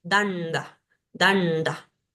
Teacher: La nasal palatal, que es esta ña, como la ñ de ñandú. Tenemos la nasal cerebral, que es una N con la lengua hacia arriba, que en español no la tenemos, pero es el sonido de danda, danda.